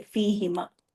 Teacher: या साकिन या जेर आए तो जाहिर है नीचे की तरफ आवाज गई ना, तो ह की पेश भी नीचे चली जाती है, जेर की आवाज ले लेती है